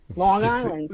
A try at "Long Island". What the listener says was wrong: Long Island. You guys say, You say back in your throat.